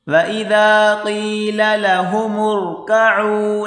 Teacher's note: میم کو را کے ساتھ ملا کر پڑھیں گے، را کو موٹا کریں